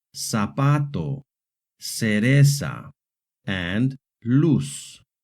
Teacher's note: The letter z in Hispanic American Spanish makes a hard s sound